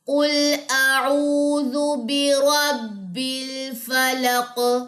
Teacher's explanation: قاف پہ قلقلہ ہوگا جب آپ اس پہ وقف کریں گے، قاف جزم والی پہ۔